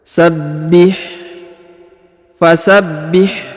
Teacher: perhatikan huruf ba ini berharokat tasdid, maka ditahan dan ditekan. Fasabbih, huruf ha sukun, maka dibaca tipis ya.